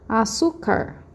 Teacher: vocês vão notar que é a penúltima que é a sílaba tônica